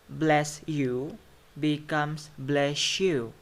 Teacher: So the s becomes sh. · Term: Assimilation